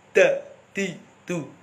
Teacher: Ini banyak yang membaca dal ini terlalu ke belakang, akhirnya menjadi D Indonesia.